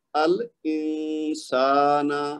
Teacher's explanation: یعنی نون کی آواز کو چھپائیں گے، نون ساکن جو ہے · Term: اخفا